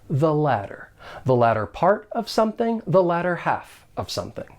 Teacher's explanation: the next word begins with a consonant sound and of course you will hear me pronounce those t's as a flap T · you'll hear me pronounce those T's as a flat T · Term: weak the